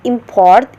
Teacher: the word import is pronounced with the first syllable sounding stronger than the second english speaker hear it a noun whereas when